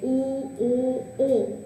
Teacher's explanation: અને જ્યારે ઉ, ઓ અને વિવૃત ઓ નું ઉચ્ચારણ કરો છો ત્યારે જે પાછળનો ભાગ છે ઉ, જો એ તો ખ્યાલ આવી જાય, ઉ, ઓ, ત્યારે જીભનો પાછળનો જે ભાગ છે એ તમને કામમાં આવે છે